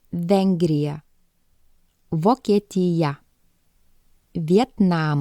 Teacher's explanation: keep your upper teeth on your bottom lip and force air gently it is a voice sound which means you should be using your voice and your vocal cord should be vibrating